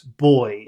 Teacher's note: you're going up at the end of the word you're saying boys boys but you should try to go down at the end of a phrase